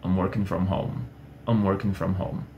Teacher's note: a minha entonação meio que cai na última palavra, e eu tô falando assim lá na última palavra, eu tô falando home, home, home, no lugar de home, assim. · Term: efeito pipoca